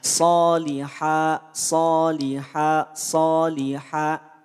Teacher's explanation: tak perlu dibaca tanwin cukup bacakan dua harakat